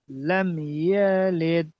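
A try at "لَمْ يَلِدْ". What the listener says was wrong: ইয়া টান হয়ে গেল। লাম ইয়ালিদ ইয়া টান হয়ে যাচ্ছে। লাম ইয়ালিদ।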